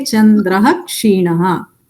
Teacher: So visargasya sthane visarga eva bhavati. So chandraha kshinaha only it becomes. You can't pronounce it as chandrakshinaha.